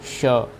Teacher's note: मूर्धन्य वाला श है, तो आप लोगों का मूर्धा से बोला जाता है श।